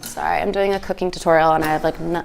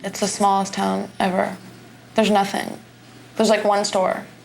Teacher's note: Her breathy baby voice tone seemed to fit the persona of a ditzy socialite